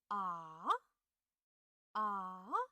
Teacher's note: 2 to 1 to 4. And the tone is first lowered and then raised, but it only rises to the position of 4, not to 5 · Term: third tone